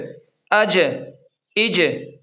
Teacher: جیم بھی حروف قلقلہ میں سے ہے، اسے بھی تھوڑا سا ہلائیں گے پڑھتے وقت یعنی جب یہ ساکن ہو، اور یاد رکھیں جب یہ حروف ساکن ہوں تب ان پر قلقلہ ہوگا ورنہ نہیں ہوگا۔